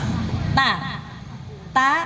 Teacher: Bukan ta, bukan digigit lidahnya, tapi di belakang gigi atas